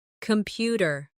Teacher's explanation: The stress is on the second syllable, computer.